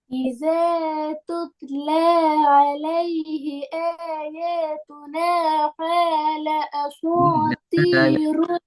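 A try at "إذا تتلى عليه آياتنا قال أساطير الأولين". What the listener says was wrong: எங்க படிச்சீங்க காஃப கேண்டு உச்சரிக்கணும். கேலண்டா ஓதுற அப்படித்தானே? கேல. எப்படி வரும் உருது பாஷை பேசுற மாதிரி?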